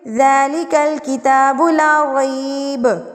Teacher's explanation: با کو ساکن کر دیں گے اور ساکن کر کے قلقلہ کریں گے